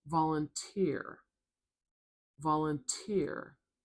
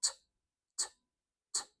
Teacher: Do you hear how it's a really sharp, loud T sound with a little puff of air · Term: aspirated T